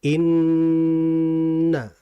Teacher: Disebutkan oleh ulama dengan tatwilul gunnah, dengan memanjangkan bacaan gunnahnya. Maksudnya dengan kadar yang cukup lama. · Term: gunnah yang kamilah